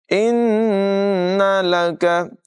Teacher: نون مشدد میں غنہ کریں گے، کاف کی آواز باریک ہوگی